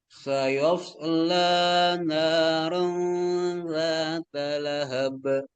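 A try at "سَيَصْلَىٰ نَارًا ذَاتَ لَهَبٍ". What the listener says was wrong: Jadi bukan sayas, enggak. Jadi iya-nya enggak boleh jadi tebal. Sayas, sayas la, yas. Jadi bukan yos.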